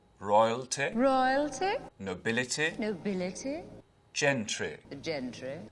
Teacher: those short ending eh sounds you won't really hear that in english accents anymore